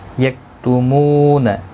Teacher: مو و مدہ ہے، ایک الف کی مقدار کے برابر کھینچ کر پڑھیں گے